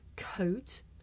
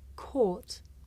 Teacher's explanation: it may be difficult to tell the difference between the diphthong O and the long vowel OR